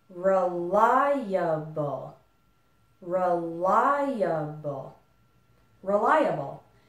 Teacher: the stress is still on the syllable ly